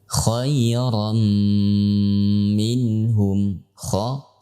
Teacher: kha pada saat fathah itu adalah kondisi tafkhim yang paling kuat, ya, pada saat huruf kha tersebut diucapkan, ya.